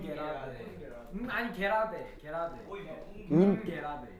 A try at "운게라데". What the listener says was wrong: 음이 아니고요. 뭐 이렇게 음이 아니고요. 음이 아니고 운.